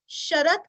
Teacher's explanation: अभी श दो प्रकार के होते हैं, एक श शरद का, दूसरा श षटकार का। शरद का श हमें जिह्वा दांतों को स्पर्श करती है